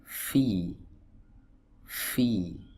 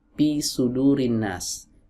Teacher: huruf fa keluar dari ujung-ujung gigi seri atas bertemu dengan perut bibir bawah.